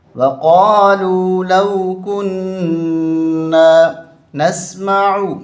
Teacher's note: وقالوا لو كنا، نون مشدد ہے، غنہ ہوگا